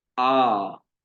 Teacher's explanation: यहां पर हमें दुगना समय देना है, उसको थोड़ा और खींचना है। तो जो बड़े अक्षर होते हैं, दीर्घ स्वर वर्ण होते हैं, उनको हमें थोड़ा और अधिक समय तक उच्चारण करना होता है।